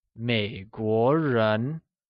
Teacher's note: Měiguó is pronounced with a falling rising tone on the e and a mid rising tone on the o